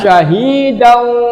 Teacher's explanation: Walaupun wawunya tidak bertasjid karena ini spesifik adalah bacaan idgham bi gunnah, maka memasukkannya, mengucapkan huruf wawunya dengan disertai gunnah atau disertai dengan dengung